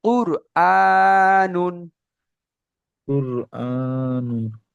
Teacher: সর্বপ্রথম এই র আর সাকিনের কায়দাটা খেয়াল করবেন। কুর, দেখেন কুর বলার সময় র কিন্তু উচ্চারণ করার সময় মুখ গোল অটোমেটিক হয়ে যাচ্ছে।